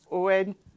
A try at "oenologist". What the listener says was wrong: Where did you put that T? Where have you found that T?